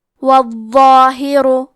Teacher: کلمت الظاہر میں حرف الضو ہے، ضو کی ادائیگی زبان کے سر اور اوپر کے دانتوں کے اندرونی کناروں سے ہے، کیونکہ ضو حروف تفخیم میں سے ہے تو ہم یہ حرف کو موٹی آواز میں پڑھیں گے